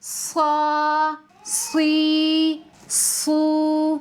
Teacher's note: صاد کو بھی سیٹی کے ساتھ میں پڑھیں گے